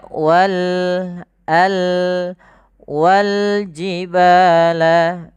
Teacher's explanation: Lam qamariyah yaitu alif lam yang kita tulis dan kita baca dengan jelas suara lamnya. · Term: alif lam qamariyah, alif lam qamariah